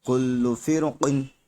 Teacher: را ساکن سے پہلے زیر تو ہے لیکن اسی کی فوراً بعد قاف، اسی قاف حروف مستعلیہ میں سے آ گیا تو اس لیے را موٹا ہوگا